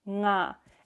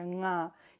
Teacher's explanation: I is a low tone, nga, which means it vibrates more the sound in the throat if you put your fingers here, nga.